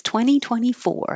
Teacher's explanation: 20, no T in the middle, 24, and a good R at the end